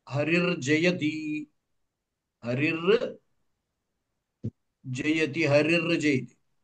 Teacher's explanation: కాబట్టి ఈ విసర్గ ఇకారం తర్వాత ఉన్న విసర్గ దానికి జకారం పరంగా ఉంది ఈ జకారము చ య చవర్గ తృతీయాక్షరం అచేత మూడు నాలుగు ఐదు వర్ణములు మృదుహల్లులు అన్నాం కదా కాబట్టి ఈ విసర్గకి మృదుహల్లు పరంగా ఉంది రేభగా మారింది